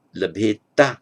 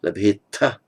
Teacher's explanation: Labheta with an unaspirated ta, labheta with an aspirated ta in Pali